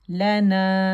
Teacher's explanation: تو نیچرل مد ہے، 2 کاؤنٹ کے لیے آواز اوپر جائے گی، لنا، اور سافٹ ہے.